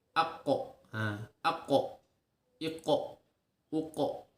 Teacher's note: qaf memiliki sifat qalqalah, yaitu memantul saat sukun. Jadi ketika mengucapkan huruf sukun maka dipantulkan.